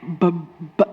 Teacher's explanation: A stop sound is um a sound that you cannot continue like the bilabial b. You cannot say b it stops.